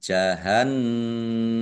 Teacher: Nun tasdid dibaca ghunah atau mendengung ditahan kira-kira dua harakat agar tampak dengungannya kemudian mimnya dibaca sukun kalau wakaf dan pendek karena tidak ada